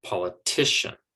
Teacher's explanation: pen ultimate or the second to last syllable politician and so it's the t that gets the stress and then those other syllables are quieter quicker softer